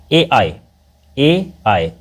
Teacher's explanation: मतलब ए आई जो है उसका उच्चारण स्थान जो है कंठ तालु है। कंठ तालु ठीक है?